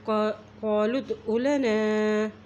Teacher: लाम की पेश को दाल के साथ मिला रहे हैं, दाल के ऊपर जज़म है